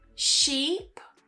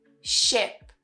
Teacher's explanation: the first one is longer, sheep, and you smile more. Then the second one, ship. We don't smile and it's shorter.